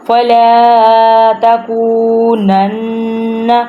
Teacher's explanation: اب نون کے ساتھ اٹیچ ہو رہا ہے تشدید کی وجہ سے، یہاں پہ ہم نے نون گنہ کرنا ہے، ناک میں سے آواز نکالنی ہے۔